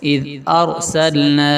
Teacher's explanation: را کو موٹا پڑھیں گے، را سے پہلے فتحہ ہے، زبر آ گیا. ارسلنا یہ مد منفصل ہے.